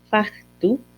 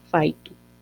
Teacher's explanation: otro caso de vocalización, palatalización de velar implosiva, como es en el caso de factu, que va a volverse faitu.